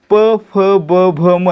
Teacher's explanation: प फ ब भ म यांचा उच्चार करताना आपल्या ओठांची हालचाल होते आणि आपले ओठ एकमेकांना चिकटतात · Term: औष्ठय वर्ण